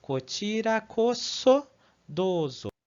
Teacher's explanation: aqui o S, apesar de estar entre duas vogais, para o japonês isso não vai influenciar, tá? Então ele vai continuar sendo pronunciado como so